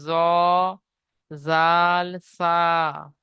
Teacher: জিভের আগা এবং সামনের উপরের দুই দাঁতের আগার সাথে লাগিয়ে উচ্চারিত হয়